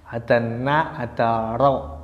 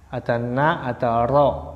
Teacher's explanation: Kalau na agak belakang, kalau ro agak maju, punggung ujung lidahnya bertemu langit-langit.